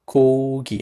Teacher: this letter, when it comes at the beginning of the word, we usually say as K